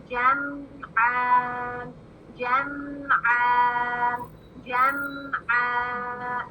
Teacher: اب میم ساکن، یہ جو میم ہے نا اس کو ہلانا نہیں ہے کیونکہ یہ کلکلہ لیٹرز میں سے نہیں ہے